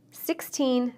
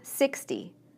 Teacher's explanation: we stress teens on the second syllable and tens on the first